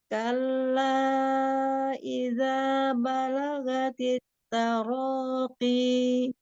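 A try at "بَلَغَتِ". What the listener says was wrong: Balagha bukan gha. Gha tebalkan huruf ghainnya. jangan dijeda-jela, jangan balaghatit karena Umi mau ngambil ancang-ancang nebalkan huruf ghainnya ya. Ya, la-nya biasa aja la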